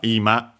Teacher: accented on the first mora, the first syllable